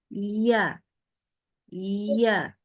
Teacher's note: itu keluar harus keluar dari lidah di area Tengah yang mana bagian tengah lidah itu kita naikkan hingga mendekati langit-langit ya tidak sampai menempel tetapi sangat mendekati ke langit-langit sehingga ada penekanan di situ ya Dan kita keluarkan ditekan iya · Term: makhraj huruf iya